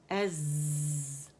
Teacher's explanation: اس میں صفیر ہے, buzzing sound ہے